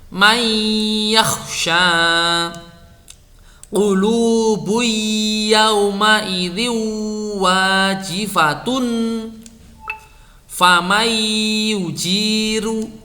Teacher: Nun tidak bertanda atau tanwin deret bertemu ya, dibaca ya disertai dengung yang lama.